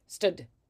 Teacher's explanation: you kind of cut off the vowel early